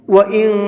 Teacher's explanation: نون ساکن کے بعد اخفا کے حرفوں میں سے کوئی بھی حرف آتا ہے تو وہاں نون کے اندر اخفا کرتے ہیں، ناک میں آواز کو چھپا کر کے پڑھتے ہیں